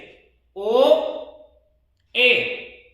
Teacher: ऐसा वर्ण जिनके उच्चारण से मुख द्वार आधा बंद रहता है। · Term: अर्ध संवृत